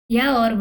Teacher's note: या और वा आपके अर्ध स्वर हैं